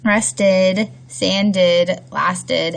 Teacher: it's pronounced id or ed after d's or t's, if the word ends with a d or a t